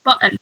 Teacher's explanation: so you don't uh physically pronounce the t